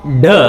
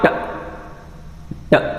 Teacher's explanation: ಸೊ ನಿಮಗೆ ಪ್ಲೋಸಿವ್ ಅಂದರೆ ಗೊತ್ತು, ಏರ್ ಬ್ಲಾಕ್ ಆಗಿ ಮತ್ತೆ ಸಡನ್ ಆಗಿ ರಿಲೀಸ್ ಆಗ್ತಕ್ಕಂಥದ್ದು. ಸೊ ವೋಕಲ್ ಕಾರ್ಡು ಇಲ್ಲಿ ವೈಬ್ರೇಟ್ ಫಾರ್ ಡ, ಡು ನಾಟ್ ವೈಬ್ರೇಟ್ ಫಾರ್ ಟ, ಟ